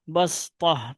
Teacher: آپ نے صاد کی جگہ سین پڑھنا ہے، اور قرآن پہ غور کریں گے آپ تو سین کے اوپر وہ جزم کا نشان ہوگا، میرے پاس جو سامنے ہے، سین کے اوپر جزم کا نشان ہے، اس کا مطلب یہ ہوا کہ سین پڑھا جائے گا یہاں پہ۔